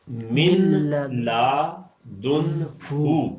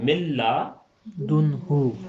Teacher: چونکہ ادغام ہو گیا ہے نون کا لام کے اندر، نون کو لام میں داخل کر دیا ہے، تو اس لیے جب ہم اسے پڑھیں گے تو یہ پڑھنے میں آئے گا ملا دن ہو.